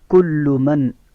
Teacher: یہاں پہ آواز کو نون میں روکنا نہیں ہے، ٹھیک ہے، جلدی سے پڑھیں گے کیونکہ آگے حروف ہلکی میں سے عین آ رہا ہے.